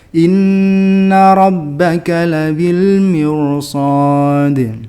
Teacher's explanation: ro sukun yang bertemu dengan huruf isti'la dalam satu kalimat itu dibaca tafkhim, meskipun sebelumnya itu kasrah